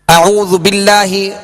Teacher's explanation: اللہ عز و جل کا لام ہم نے پڑھا تھا کہ اس سے پہلے زیر اگر آ جائے تو باریک پڑھیں گے